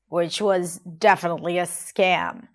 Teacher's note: Now here I wanna talk about her intonation, or even more particular, her tone of voice. She drops down in her voice